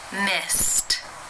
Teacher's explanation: the final infinitive sound is the S sound that is unvoiced so it is case one where the e d is pronounced as the T sound